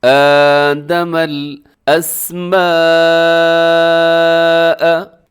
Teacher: یہاں بڑی مد ہے اور حروف مدہ اور حمزہ ایک ہی لفظ کے اندر ہے